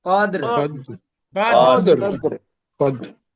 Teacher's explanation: রটা 3 ভাগের 1 ভাগ উচ্চারণ হবে